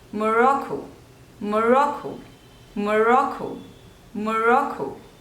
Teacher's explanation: there are three syllables and the stress is on the second one